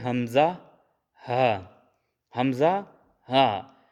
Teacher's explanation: حروف حلقیہ اور حلق کے جو سب سے نیچے سے ادا کیے جانے والے حروف ہیں وہ ہیں حمزہ ہا